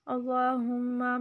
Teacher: اللہم میم پہ غنہ اور میم کو لمبا نہیں کرنا